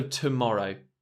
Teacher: tomorrow uh has a schwa towards the beginning